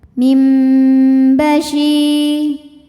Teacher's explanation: Kemudian ada hukum iql. Karena nun sukun menghadapi ba. Maka bunyi nun diganti mim. Mim disertai dengung.